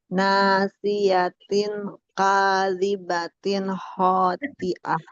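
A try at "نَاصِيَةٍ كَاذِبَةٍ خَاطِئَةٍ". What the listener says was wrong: Kenapa itunya nggak pakai ikhfa? Kan ada ting nasiyatin. Oh, kalau ting itu kan idhar halki, itu mah jangan.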